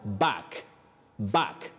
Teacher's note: it is the low front sound ah the short one